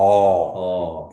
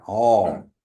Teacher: Oh. It's going down, that tone is going down, and you can lengthen it, oh. And then when you say that first part right after oh, you say yan.